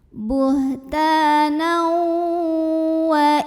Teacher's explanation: idghamnya itu adalah idgham nakis, masuknya tidak sempurna tanwin ke wawunya karena masih ada sifat dari nun yang terbawa saat berpindah, saat masuk ke wawu ya.